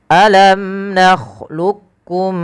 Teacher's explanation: izhar syafawi yaitu suara mimnya dibaca dengan jelas